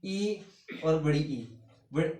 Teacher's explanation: ई और बड़ी ई है वो तालव्य से बोला जाता है